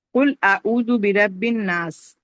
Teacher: اور واو اعوذ میں واو مدہ ہے، اس کو 2 کاؤنٹ تک پڑھیں گے. برب الناس میں جو ہے نون مشدد ہے، اس پہ غنہ کریں گے اور 2 کاؤنٹ پڑھیں گے · قل میں قاف جو ہے ہیوی لیٹر ہے ان کو موٹا پڑھیں گے